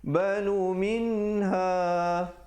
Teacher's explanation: Izhar halqi bunyi saja min terus masuk ha.